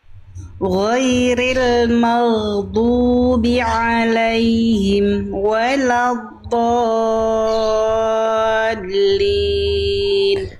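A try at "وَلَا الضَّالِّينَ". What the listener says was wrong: Tapi tinggal di waladdallin dia jangan sampai keburu dilempar ke vokal O-nya Bunda. Tapi ditunaikan dulu sifat istitolah.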